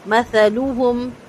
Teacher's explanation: سا نرمی کے ساتھ زبان کی نوک دانتوں سے باہر نکال کے پڑھا جائے گا